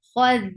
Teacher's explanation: Kha should be heavy, but not dal.